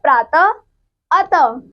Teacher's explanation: अगला है विसर्ग। इसका उच्चारण हल्के ह की तरह होता है। इसका चिन्ह दो बिंदु जैसे कि ये है।